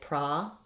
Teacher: In other dialects of English, you can say progress with an O. In American English, we say pra because O usually says ah. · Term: ah sound